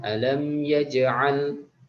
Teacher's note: ada Qolqolah Sugro qolqolah yang matinya asli